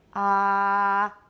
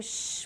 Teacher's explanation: ah is very low compared to shh which is very high